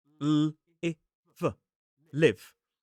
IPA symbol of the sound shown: lɪv